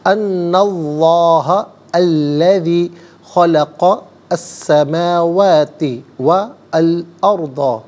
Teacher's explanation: اسم اللہ کے حرف لام سے پہلے والے حرف نون پر زبر ہے، اسم اللہ کے حرف لام کو پر کر کے پڑھا جائے گا